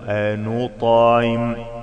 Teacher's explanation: الطاء ساكنة فيها قلقلة